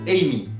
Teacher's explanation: Par exemple, si on prend le cas du mot Amy, le A va se prononcer tendu, car il est suivi d'une consonne et d'une voyelle en fin de mot